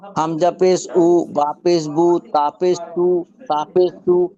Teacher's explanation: পেশের আওয়াজ সামনের দিকে যায় আর গোল হয় গোল হবে